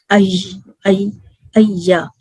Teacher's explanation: ایا پڑھتے ہیں نا تو پورے پیلیٹ کو ٹچ نہیں ہوتا، تھوڑی سی اسپیس ہوتی ہے، وہاں سے یا ادا ہوتا ہے۔ اور یہ بھی لائٹ لیٹر ہے، اور کتنے کاؤنٹ پرولونگ ہوگا، 2 کاؤنٹ پرولونگ ہوگا، ٹھیک ہے۔